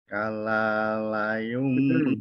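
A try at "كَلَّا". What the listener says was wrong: Tekan Pak, ada tasdid. Kalla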